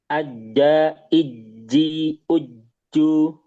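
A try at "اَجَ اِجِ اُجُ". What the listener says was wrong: Nah kasrah utamanya masih keluar udara. masih sedikit. Kerasa nggak? Masih. Ya yang kasrah. Sama dengar juga sedikit. Uju, ju, ju. kasrahnya. Iji. ya, dilatih ke tengah lagi.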